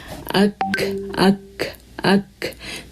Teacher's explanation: اور اس سے تھوڑا سا آگے جو سافٹ پائلٹ دکھ رہا ہے زبان کا، وہ یہ جو ڈیپسٹ پارٹ ہے جو بلو میں شو ہو رہا ہے، یہ ہمارا اٹھے گی زبان اور اٹھ کے ہماری سافٹ پائلٹ پہ ٹچ ہوگی تو کاف ادا ہوگا